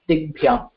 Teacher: And similarly for dish, if we take dish plus bhyam, for dish the Prathama Vibhakti Ekavachana form is dik, and dik plus bhyam, and kakara becomes gakara, it becomes a third consonant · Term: soft consonant